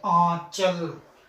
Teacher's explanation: जिसका उच्चारण करते समय जो वायु होती है, जो हवा होती है, मुख और नाक दोनों के साथ बाहर निकलती है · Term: अनुनासिक